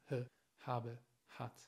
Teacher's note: das H ohne Friktion, also ohne Reibung zu sagen. Ich weiß, diesen Ton, diesen Klang gibt es nicht im Spanischen, aber ihr müsst das lernen, dieses h, h, h zu sagen, ohne Reibung.